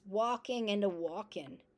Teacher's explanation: Other features include dropping syllable, final consonants, walking into walk-in